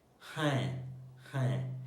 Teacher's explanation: there is a nasal sound at the end, like half nasal